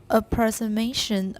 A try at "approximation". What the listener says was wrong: You're missing a K.